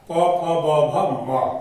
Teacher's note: उसके बाद 6 में है ओष्ठ, ओष्ठ का मतलब ओठ होता है, यानी दोनों ओठ से पवर्ग आता है